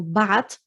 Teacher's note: In standard is with the tha, but often as well the tha will change to a ta in Lebanese when we're pronouncing it